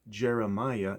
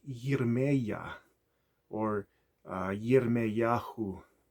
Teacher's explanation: There were no J sounds, but instead the Y sound was used.